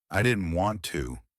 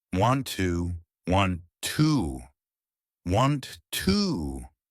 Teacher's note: So here we connect the didn't and the want, but we drop the T.